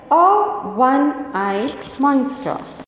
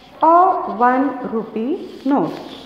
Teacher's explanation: It starts with a vowel O, but it has a consonant sound W.